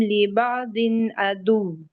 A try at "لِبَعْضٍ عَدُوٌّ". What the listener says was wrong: دن نہیں ہے نا، دال نہیں ہے، یہ حافظ سے یوز کیجیے، حافظ یوز کیجیے اپنا۔ لبعض، زبان کی جڑ، زبان کے درمیان اوپر اٹھائیے۔ بعضکم لبعض، ضین ضاد بلند کریں، موٹا ترین حرف۔